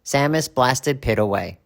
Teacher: we use ID because the verb blast ends in a t and when the verb ends in a t or a d